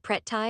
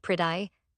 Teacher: In American English, that double T softens into something that barely resembles a T at all. It becomes a fast, light tap of the tongue, a quick flicker against the ridge just behind the upper front front teeth, so brief that it almost disappears entirely. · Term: a flap, flap